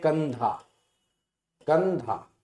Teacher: जैसे उदाहरण की दृष्टि से देखा जाए, जैसे हम लोग कहते हैं कंधा, कंधा, कंधा को जब पढ़ेंगे तो देखिए कंधा में ये जो अनुस्वार की बिंदी लगी है, कंधा में जो अनुस्वार की बिंदी आती है इसे ही अनुस्वार बोला जाता है कंधा। आप देखो नासिका का प्रयोग किया गया, नाक का प्रयोग किया गया